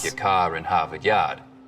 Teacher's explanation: Stereotypical Boston accents, of course, are non-rhotic, meaning no R sounds